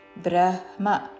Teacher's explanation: బ్రహ్మ ముందు హా పలికి తర్వాత మా.